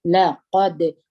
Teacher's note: دال باندې قلقله ده لقد قاف زور د دال سره وجنګوي د دال کې د قلقلې صفت هم دی د جهر صفت هم دی